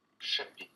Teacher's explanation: that P is just barely there